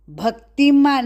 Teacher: भक्ति भ पर आघात